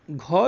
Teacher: घ जो है ये क वर्ग का चौथा वर्ण है, तो ये महाप्राण वर्ण है